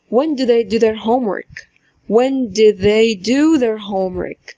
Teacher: الاولانيه د الثانيه دو، الاولانيه قصيره والثانيه طويله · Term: الويك فورم